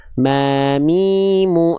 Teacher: Dengan cara menyentuhkan antara bibir atas dan bibir bawah. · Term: huruf mim